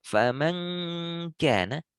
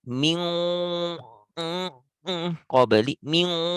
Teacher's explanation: semua itu bunyi hanya ada dari hidung. Maka ketika hidung ditutup, suara hilang karena semua suara di hidung. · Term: dengung sempurna